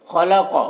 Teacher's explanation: خا اور قاف دونوں حروف مستعلیہ میں سے، دونوں کو پر پڑھیں گے۔